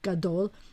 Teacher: the accent's on the second syllable, because usually the accent's at the end of the word, gadol, the accent's on the dol, gadol.